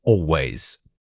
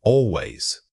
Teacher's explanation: The stress falls firmly on al, but remember to let the final syllables glide away quickly. This prevents your speech from sounding labored or overly deliberate.